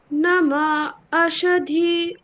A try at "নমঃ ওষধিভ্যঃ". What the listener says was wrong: ওকারটাকে টানতে হবে, ভুল করলে চলবে না। হ্রস্ব দীর্ঘ ভুল করলে চলবে না, হ্যাঁ। নমঃ ওষধিভ্যঃ, বলুন।